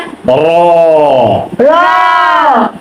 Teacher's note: জিহ্বার আগার উল্টা পিঠ তার বরাবর উপরে তালুর সঙ্গে লাগাইয়া